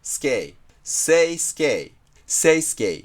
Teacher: since English words generally don't end with /e/, it becomes a diphthong /eɪ/ at the end.